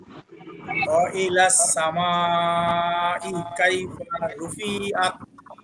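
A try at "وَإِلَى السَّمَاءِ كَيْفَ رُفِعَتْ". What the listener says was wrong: রুতে একটু টান হয়ে গেছে, হরকত আরেকটু চালু।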